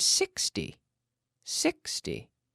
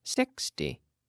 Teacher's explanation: notice how I'm saying sixty with the intonation on the first half